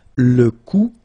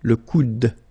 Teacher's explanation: you don't insist on this final e, it only gives you the sound of d at the end.